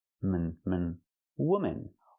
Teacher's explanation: The second syllable is relaxed and closed.